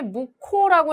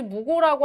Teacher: 기역과 히읗이 만나서 무코 이렇게 발음되는 자음 축약이 일어나죠